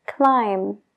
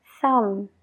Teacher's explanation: entonces paramos la palabra justo donde está la m ignora la B completamente a la hora de pronunciarlo